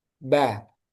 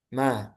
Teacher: Jadi bibir atas sama bawah itu ditutup rapat agak ditekan kalau untuk ba. Baru kalau untuk mim dia merapatnya itu hanya biasa aja enggak ditekan seperti ba